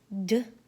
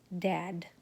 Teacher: It is a voiced stop sound made with the tongue behind the teeth